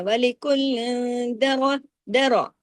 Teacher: لام دو زیر لن کی جو تنوین ہے اس کے فوراً بعد دال آیا تو اخفا حقیقی غنہ کاملہ ہو گیا